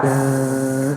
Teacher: Ada suara menyertai desis juga